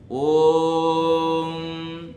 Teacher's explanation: ओम का जो उच्चारण है उसमें ओ जो है वो प्लुत है ओम तो इसलिए वहां पर प्लुत है इसलिए तीन का अंक